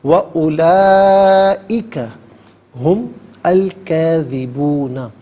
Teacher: ہم میں میم پر پیش ہوگا، اس سے الکاذبون کے لام ساکن کے ساتھ ملائیں گے، درمیان میں سے الف نی حمزہ کو حذف کیا جائے گا۔ کاذبون میں کاف پر کھڑا زبر، کاف کھڑا زبر کا اور کاف الف زبر کا، دونوں طریقوں سے پڑھنا درست ہے۔